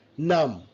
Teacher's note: Numb, na, ma, দুইটা nasal sound, right? নাক দিয়ে সাউন্ড বের হয়